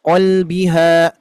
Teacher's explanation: qafnya tebal tetap ya, bunyi ko itu bukan berasal dari dua bibir kita ya, bukan memonyongkan tapi di dalam